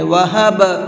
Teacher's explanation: جو لاسٹ میں آواز نکل رہی ہے ہلکی سی، اسی کو قلقلہ کہتے ہیں